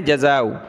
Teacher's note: یہ زا پر مد ہے، اس کو ہم نے کھینچنا ہے